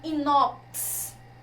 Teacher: Às vezes o X vai ter esse fonema aqui, que é o fonema KS